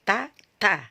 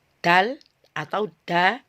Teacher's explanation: ta itu sifatnya dia Hamas jadi udaranya harus mengalir makanya ketika kita ee Letakkan tangan kita di depan seperti ini